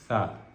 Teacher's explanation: زبان کا سرا اور اوپر کے جو دانت ہیں ان کا سرا آپس میں جب ٹکرائے گا تو ثا ادا ہوگا